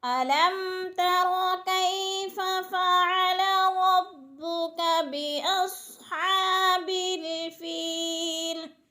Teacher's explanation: یا ساکن سے پہلے فا کے نیچے زیر ہے تو یا مدہ کھینچ کر پڑھنا ہے